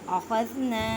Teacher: اخذنا الف سے پہلے زبر ہے، الف مدہ کا قاعدہ کریں، مینس کہ ایک الف کی مقدار میں کھینچ کر پڑھیں.